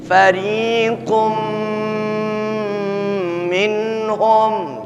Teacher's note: Tapi ketika sudah terlafazkan dengan lisan kita, tersentuh hukum tajwid idgham bi gunnah, maka ya bukan lagi qun bunyinya, tapi qum bi gunnah dengan memperhatikan nilai gunnahnya. 2-3 ketukan paling tidak.